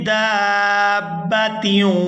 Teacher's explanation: یہاں دال کو کھینچتے ہوئے با مشدد کے ساتھ ملائیں گے۔ دال الف مد با زبر داب، با زبر با داب، تا واو دو زیر تیوں، دابتیوں۔